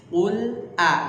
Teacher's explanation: Nah, a langsung tipis. Karena hamzah istifal. A'u langsung ke tengah tenggorokan.